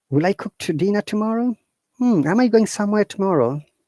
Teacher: our voice should be going up, our intonation should be going up, and from the intonation, people will be able to understand whether it's a question or not. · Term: rising intonation